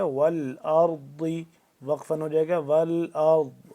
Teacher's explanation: زبان کی بائیں کروٹ کو اوپر والی جو داڑھ ہیں ان کے ساتھ جب ٹچ کریں گے تو اپنی مخرج سے ادا ہوگا ضاد